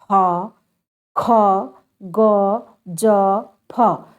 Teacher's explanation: मुख द्वार इतना संकीर्ण यानी पतला हो जाता है कि हवा को बीच से संघर्ष करके निकलना पड़ता है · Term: संघर्षी व्यंजन